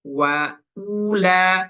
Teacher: Nah, U-nya kita pendekkan saja.